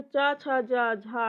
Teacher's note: जो चा, छा, जा, झा है ये तालव्य ध्वनियां हैं, क्योंकि इनका उच्चारण स्थान तालु है।